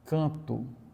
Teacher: Ou então mesmo canto, né, com som de U.